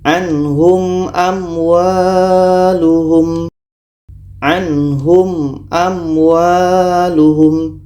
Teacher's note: surah Ali Imran ayat 7 ini ada mim mati bertemu Zah maknanya ini izhar syafawi dibaca jelas dan tidak dengung kita baca [Musik] mim jelas jelas dan tidak ada dengung contoh · Maka ini izhar syafawi, dibaca jelas. Mim jelas, a jelas. Mim jelas, waw jelas, dan tidak boleh didengungkan.